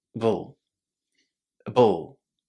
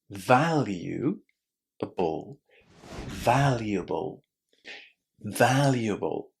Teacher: these four letters are pronounced as just one syllable which starts with a very very short vowel sound uh uh and then you say b and d together trying not to put any vowel in between bull a bull.